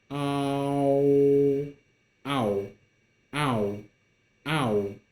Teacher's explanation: So, ow, when you pronounce it, it requires you to quickly move from ah to wo, and then combine them together.